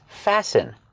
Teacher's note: with the verb fasten the t is silent it's not fasten it's fasten fasten is the verb it says